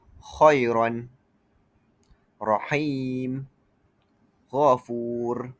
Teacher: Seterusnya rakhawah suara mengalir lembut tidak tertahan.